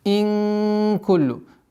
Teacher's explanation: Четкое ясное произношение кясры. «Ин» удержание сокрытия в размере 2 огласовок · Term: Ихфа